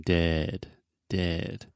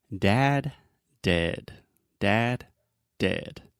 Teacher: when you say dead you can relax your lips a little bit relax everything a little bit more and then the sound comes from a little bit more in the center of your mouth